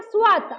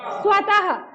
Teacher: ऐसे बोलेंगे कि जैसे उच्चारण में ह की मात्रा आनी चाहिए, यानी ह ध्वनि निकलनी चाहिए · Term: विसर्ग युक्त